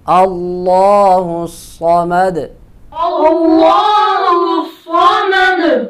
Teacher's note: हमारे यहाँ अमूमन लोग पढ़ते हैं अल्लाहु समद, अल्लाहु समद, लंबा नहीं करते, ये गलत है। अल्लाह इसको खींचेंगे, एक अलिफ के बराबर लंबा करेंगे और लाम को मोटा भी करेंगे